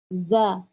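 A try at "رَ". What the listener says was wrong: Ra. Ra. Jangan ja. Ra. Agak keras dikit. Ra. Ra. Ra. Ra.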